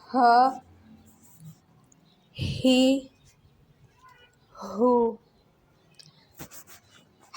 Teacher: ہا جو ہے ہمارا حلق کے نیچے سے ادا ہوگا، تو ہمیں مخرج کا بھی اس میں خیال رکھنا ہے۔ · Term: حرف حلقیہ